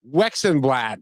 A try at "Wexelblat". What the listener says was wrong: Wexel, not Wexon. Wexel